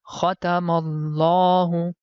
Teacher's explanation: the right pronunciation is that we have to stretch the La sound. So the reason behind it that there is hidden small alif.